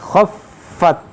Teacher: دیکھیے خا حروف مشتعلیہ موٹا کریں گے، فا پر تشدید ہے، فا پر تشدید ہے، اس کو دو بار پڑھیں گے